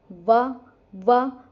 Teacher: दंतोष्ठय में क्या होगा जिसमें दांत और ओष्ठ दोनों ही मिले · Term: दंतोष्ठय वर्ण